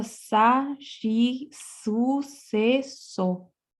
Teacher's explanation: Entonces, un poquito como en chino también, en el caso de los caracteres, la siguiente letra, la S, es una S un poquito más líquida que en español, como más larga